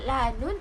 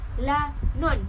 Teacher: Sebutan Johor Riau bagi fonem vokal U pada suku kata tertutup dibunyikan dengan O.